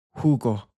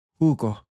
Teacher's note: Notice how the letter J doesn't sound like a J at all. It takes on this sort of breathy H sound.